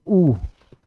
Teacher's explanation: तो जब हमारा मुंह का जो होंठ है वो गोल टाइप के जब बन जाते हैं वृत्ताकार रूप में, तो उसको बोलते हैं वृत्ताकार स्वर